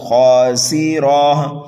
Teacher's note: خا کو پر کر کے پڑھنا ہے، ایک الف کے برابر کھینچنا ہے، سین کو سیٹی کی آواز دے کر کے پڑھنا ہے، را کے اوپر زبر ہے، را کو پر پڑھیں گے اور اس گول تا کو ہا سے بدل دیں گے، خاسرہ۔